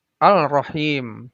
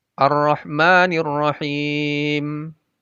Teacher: dengan ro tidak dibaca ar-rahman Al Rohim tidak dibaca begitu karena Alif lamnya menjadi idgham masuk ke ro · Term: Idgham Syamsiah